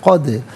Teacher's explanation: حرف قلقلہ ہے تو آواز لوٹتی بھی محسوس ہونی چاہیے